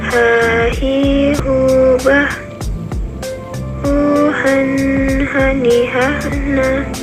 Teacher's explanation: Huruf H dikeluarkan dari tengah tenggorokan, sama seperti kita mengucapkan kata ayah.